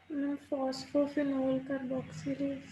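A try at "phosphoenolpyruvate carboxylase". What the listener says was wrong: फॉस्फोइनोल pyruvate बेटा, फिनोल नहीं, फॉस्फोइनोल pyruvate कार्बोक्सिलेज। ठीक है, पेप्टेज का फॉस्फोइनोल पायरुवेट कार्बोक्सिलेज।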